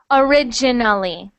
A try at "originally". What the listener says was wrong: Okay, so every time you say it, it gets better and better and better.